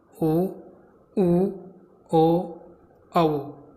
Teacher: ये 4 स्वर जो हैं वो कैसे हैं, वृत्ताकार स्वर, यानी इनका उच्चारण करते समय जो है वो होठ वृत्त का आकार ले लेते हैं, यानी गोल आकृति के हो जाते हैं इन 4 स्वरों का उच्चारण करते समय, तो इसलिए इनको वृत्ताकार स्वर कहा गया।